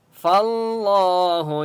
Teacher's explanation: فاللہ لام کے اوپر تشدید ہے اس لیے فا کو لام کے ساتھ ملائیں گے اور اللہ کا نام موٹا ہوگا کیونکہ اس سے پہلے فا کے اوپر زبر ہے.